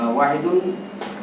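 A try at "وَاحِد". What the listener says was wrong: ওয়াহেদ, ওয়াহিদুন টুন ওগুলো পরে।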